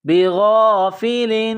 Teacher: غین جس طرح انسان گلے سے بلغم نکالتا ہے غین کو نکالیں گے ، با زیر بھی غین الف زبر غا بغا فا زیر